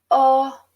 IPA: ɔ